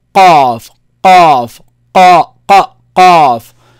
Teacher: The back of the tongue touches the soft palate up.